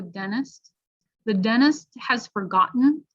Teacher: sometimes a native speaker will eliminate the t sound